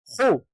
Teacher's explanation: یہ خے نہیں ہے بلکہ خ ہے. خ کا مخرج بھی سیم غین کی طرح ہے، یعنی حلق کا سب سے اوپر والا حصہ جو منہ کی طرف ہے وہاں سے خ ادا ہوگا